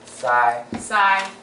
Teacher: very very high in level and high in level doesn't drop doesn't rise it's flat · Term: first tone